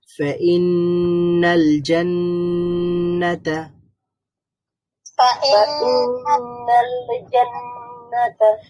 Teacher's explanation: নুনের মধ্যে গুন্নাহ করতে হবে।